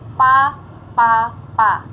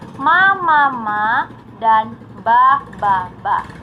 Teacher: Celotehan anak dimulai dengan konsonan bilabial hambat dan bilabial nasal. Selanjutnya diikuti dengan vokal A.